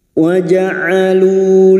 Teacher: Waja'alu huruf ain, jangan tertukar hamzah, huruf ain. Wastul halqi, tengah tenggorokan.